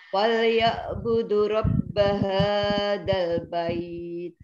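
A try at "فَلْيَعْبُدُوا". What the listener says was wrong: Falya'budu, dunya panjang.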